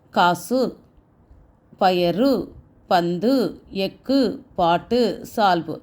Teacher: ஒரு சொல்லுக்கு இறுதியில் வருகின்ற போது தன்னுடைய மாத்திரை அளவான ஒரு மாத்திரையிலிருந்து குறைந்து அரை மாத்திரையாக ஒலிக்கும் · உகரம் தன்னுடைய ஒரு மாத்திரையிலிருந்து குறுகி அரை மாத்திரையாக ஒலிக்கிறது. அதுதான் குற்றியல் உகரம்னு சொல்றோம்.